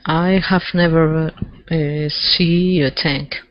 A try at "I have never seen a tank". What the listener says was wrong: I have never seen with an N at the end. Okay, so make sure you pronounce that N.